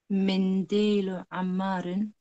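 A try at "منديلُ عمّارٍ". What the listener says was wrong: MashaAllah, go on.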